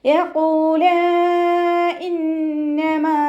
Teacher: ഖാഫ് ഇസ്തിഅലാൻ്റെ ലെറ്ററാണ്, ഉയർത്തി ഉച്ചരിക്കേണ്ട 7 അക്ഷരങ്ങളിൽ പെട്ടതാണ്. തഫ്വീം ചെയ്യുക കേട്ടോ. ഹെവി ആക്കിയിട്ട് ഉച്ചരിക്കുക. ഖാഫിൻ്റെ കൂടെ വാവ് മദ് വന്നിട്ടുണ്ട്, 2 കൗണ്ട് നീട്ടിക്കൊടുക്കുക. · മദ്ദക്ഷരത്തിന് ശേഷം അടുത്ത വേർഡിലായിട്ട് ഹംസയും വന്നിട്ടുണ്ട്. അപ്പോൾ 2ഓ 4ഓ കൗണ്ട് നീട്ടി പാരായണം ചെയ്യുക കേട്ടോ. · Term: മദ് ജായിസ് മുൻഫസിൽ